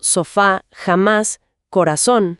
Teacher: Tenemos las agudas, con el acento en la última sílaba.